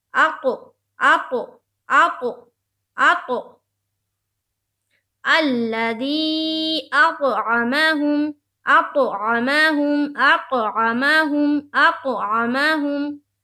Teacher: تو یہاں پر دیکھیے طا حروف قلقلہ میں سے ہے، گویا جب حمزہ کو تا سے ملائیں گے تو وہاں پر آواز ٹکرانی چاہیے